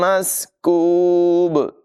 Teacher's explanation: और यहाँ भी तनवीन के बाद मीम हुरूफ़ यरमालून में से है, इदगाम होगा, यानी मिलाकर और गुन्ना करके पढ़ेंगे। सीन की आवाज़ में सीटी पैदा करेंगे, काफ की आवाज़ बरीक होगी। और यहाँ पर भी बा साकिन होगा तो खूब ज़ाहिर करके क़लक़ला करके पढ़ेंगे।